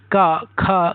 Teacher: जिन व्यंजनों के उच्चारण में जीव यानी जीव का पिछला भाग हमारे गले को स्पर्श करता है उसे कंठ व्यंजन कहते हैं। इन ध्वनियों के उच्चारण के समय गले पर दबाव पड़ता है।